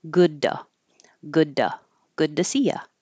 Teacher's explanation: if the t is after a voice sound like du du if you say du you have vibration in the throat then the T changes to a d